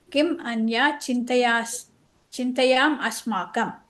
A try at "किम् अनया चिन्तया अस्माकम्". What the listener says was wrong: கிம் அந்யாலாம் இல்ல, கிம் அனயா,